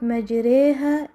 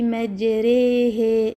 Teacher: A common mistake is allowing imala to continue into the following ha, causing it to sound slanted. The ha should instead be pronounced with a clear, pure fatha. Don't say majrehe.